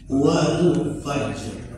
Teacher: Kan nggak ada qalqalahnya tuh. Karena langsung ke ro, ya. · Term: waqaf ru